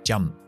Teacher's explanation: Termina con la P. La P es explosivo, lo que llamamos oclusiva, y no lleva voz